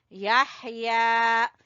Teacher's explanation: याह, हा को गले के दरमियान से